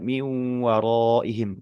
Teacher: Kemudian setelah itu di di ayat 20 juga min waraihim gitu ya. Nun sukun bertemu dengan wawu idgham bih bununah. Pastikan dia ditahan lama, mendenggung lama